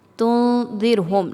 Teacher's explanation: نون ساکن کے بعد دال ہے، حروف اخفا میں سے ہے، اخفا کیا جائے گا، نون کی آواز کو چھپایا جائے گا ناک میں